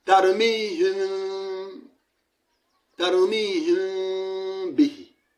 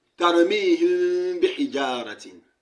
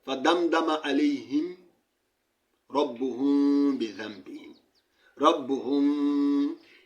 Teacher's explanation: You need to pull up from one definite makhraj. You left a furja between the two lips.